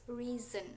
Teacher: Jadi reason and reason, but uh, the the correct way to say it is reason. So we should say it like z, because s was in between two vowels, two vocal letter, like e and a.